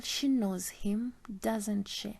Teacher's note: The first part has a falling intonation because it is a statement, and the second part has a rising intonation because it's a tag question. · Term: fall rise intonation